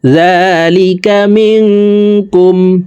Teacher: জাল হরফের উপরে খারা জবর আছে, তাই এই জাল হরফকে 1 আলিফ টেনে পড়ব